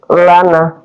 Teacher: Jadi ketika kita sebut nun maka dia otomatis akan keluar di hidung. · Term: huruf al-haisum